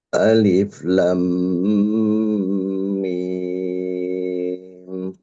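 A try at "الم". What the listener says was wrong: Alif la yang dipanjangkan la-nya. Jadi bukan lam, bukan. Nggak masuk dengung dulu, tapi yang panjang 6 harokat itu la-nya dulu. Alif lam mim.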